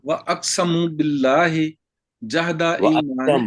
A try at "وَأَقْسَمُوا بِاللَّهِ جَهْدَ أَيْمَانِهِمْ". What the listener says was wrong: وَأَقْسَمُوا لمبا ذرا کر لیں، وَأَقْسَمُوا